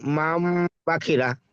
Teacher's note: আমরা একটু আগে বললাম ইজরা করার সময় কে নুন সাকিনের পরে বা আসছে, তাই নুন সাকিনকে মিমের দ্বারা পরিবর্তন করে পড়তে হবে, একালি পরিমাণ গুণা করে পড়তে হবে